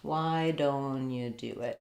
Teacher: So what's different between those two phrases? When I say, why don't you do it? I lose this T sound.